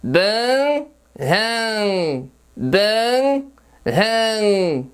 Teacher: pronunciar o som da H como um som fricativo glotal surdo, como numa risada, ou como ele é pronunciado no inglês